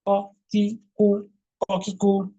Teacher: জিহ্বার গোড়াটা তালুর সঙ্গে লাগিয়ে। কিভাবে? মোটা ও ঊর্ধ্বমুখী কলকলা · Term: কফ